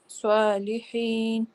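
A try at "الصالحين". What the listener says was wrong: ہاں جی, سو کے لیے آپ کے نا گول منہ ہو رہا ہے, سوا نہیں ہوگا, سو. ہاں جی, سو جیسے صوفہ کہتے ہیں, صوفہ. لی اس کے آگے نا آپ لکھ کے نا اس کے آگے چھوٹی اے یا ای لکھ دیں, کچھ بھی جو بھی آپ کو آسان لگے. کہ حاضر یا ہی ہم پڑھتے ہیں, ہے نہیں پڑھتے نا کبھی بھی. حاضر چھوٹی اے, ٹھیک ہے نا, حاضر اور چھوٹی اے.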